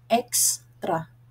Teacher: ang e ay isang patinig Pagkatapos ay sinusundan ng dalawang cluster na K at s upang mabuo ang isang pantig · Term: pormasyong pkk